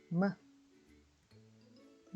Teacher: 음 모양을 만든 상태에서 뭐 하고 콧소리를 내쉬면 됩니다